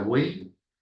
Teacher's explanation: Ya sabes que la y al final suena como una I latina, hay un triptongo.